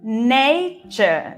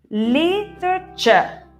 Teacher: si te das cuenta, la primera vocal es la que lleva el acento